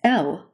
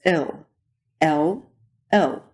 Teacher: The hard L as in laboratoria or L moves up even further in the back forming a throaty kind of swallowed O.